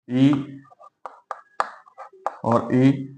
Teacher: उच्चारण स्थल के आधार पर स्वरों को किस प्रकार से हम विभाजित कर सकते हैं, तो देखिए ए और आ, ये दोनों का उच्चारण स्थल कंठ है, इसलिए इन्हें कंठ ध्वनि कहा जाता है। ई और ई, इनका स्थान तालु है, इसलिए इन्हें तालव्य ध्वनि कहा जाता है। ऊ और ऊ, इनके उच्चारण स्थल ओष्ठ है।